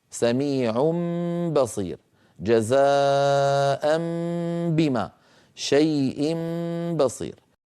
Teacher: نطق الميم المنقلبة عن نون، ويكون بانطباقهما على بعضهما دون مجافاة ولا كز · إذن التنوين قد يكون مرفوعا أو منصوبا أو مجرورا، لا يهمنا، المهم أننا نقلب التنوين ميما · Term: القلب